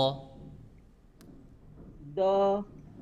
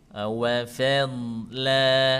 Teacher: Sedangkan huruf do itu yang nyentuh dari ujung lidah sampai sisi lidah itu nyentuh semuanya ke giginya. Pangkal giginya ya.